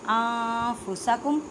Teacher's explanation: نون ساکن کے بعد فا, اخفا کا قاعدہ, ان نہیں کہنا